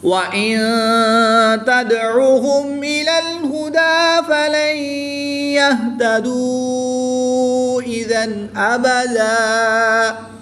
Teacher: نون ساکن کے بعد تا حروف اخفا میں سے ہے تو یہاں پر اخفا ہوگا یعنی غنہ زمانی کر کے پڑھیں گے. یہاں پر نون ساکن کے بعد یا حروف یرمالون میں سے ہے تو یہاں پر ادغام مع الغنہ ہوگا یعنی یہاں پر بھی غنہ کر کے پڑھیں گے. · دو زبر کی تنوین کے بعد حمزہ حروف حلقی میں سے ہے تو یہاں پر اظہار ہوگا غنہ نہیں کریں گے